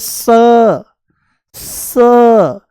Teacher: ये दंत्य सकार है। दांतों से बोला जाता है